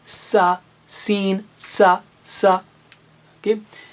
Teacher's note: بالکل اسی طرح زبان کی نوک کو نیچے کے دانتوں کناروں سے لگائیں گے